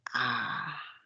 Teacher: desciende completamente cuando se produce una a no la lengua está en la parte más baja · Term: vocal baja